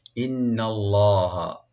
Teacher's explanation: ইন্না হামজাকে রাইট দিবেন, নুন মুসাদ্দাদ এখানে ওয়াজিব গুন্না, একালে পরে গুন্না করবেন, টানবেন না। ইন্নাল্লাহা, লফজ জালাল এখানে ডিপ হবে।